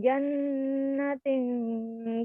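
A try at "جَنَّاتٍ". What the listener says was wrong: Panjangin. Jannat. Nanya panjang, ada fathah berdiri.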